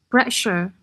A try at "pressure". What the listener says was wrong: Pressure. Why is there a pre? It's pressure, and then sure. I felt like you put in another D or T between the sure. It's pressure, whereas normally it's just pressure.